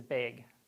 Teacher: bag and beg tend to be produced as the same, with the same vowel in like Wisconsin, in like the Midwest, right, upper Midwest. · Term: Northern Cities vowel shift